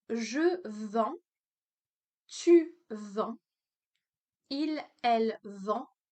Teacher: I don't pronounce the last consonant here, so I don't pronounce the D or the DS.